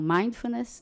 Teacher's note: Vamos lembrar sempre que a sílaba tônica é a primeira, que é uma palavra grande.